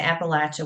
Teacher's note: here in Central Appalachia and Southern Appalachia, we say Appalachia with a short A